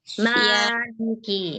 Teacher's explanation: huruf mim itu makhrajnya itu kan hanya dengan merapatkan kedua bibir, ya kan? Jadi nggak perlu ada tekanan.